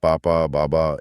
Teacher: ब बोलने के लिए बस दोनों होंठों को आपस में टकराना है।